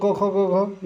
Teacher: क वर्ग का उच्चारण स्थान कंठ है। क वर्ग, क, ख, ग, घ, ये सब कंठ से बोले जाते हैं